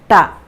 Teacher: നാവും വായും ഈ പൊസിഷനിൽ വെച്ചുകൊണ്ട് തൊണ്ടയിൽ നിന്നും ശബ്ദംഉണ്ടാക്കി നിശ്വാസവായു വായിൽ എത്തുന്നു നാവിൻറെ തുമ്പ് മുകളിലേക്ക് ഉയർന്ന് മടങ്ങിയിരിക്കുന്നതിനാൽ നിശ്വാസവായുവിന് വായിൽ നിന്നും പുറത്തേക്ക് കടക്കാൻ സാധിക്കാതെ പൂർണമായി തടയപ്പെടുന്നു